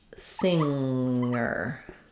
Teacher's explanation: like singer I have just sing singer so it's not singer there's just the NG sound there's no G sound like in finger